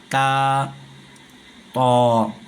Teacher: زبان کا کنارہ سامنے کے جو دانت ہے ان کے جڑ میں زبان کا کنارہ لگتا ہے، تب جا کر یہ دونوں حروف ادا ہوتے ہیں، تا، طا۔